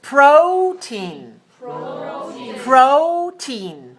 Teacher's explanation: protein two syllables stress the first